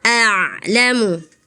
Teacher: Kalau ain sukun ada ngalirnya dikit suaranya ya.